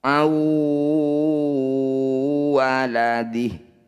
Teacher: Bunyi nun masukkan pada huruf waw, kemudian dengungkan, tahan 2 ketukan. · Jadi ketika dengung, bibir kita sudah mencucu. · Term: idgham bi gunnah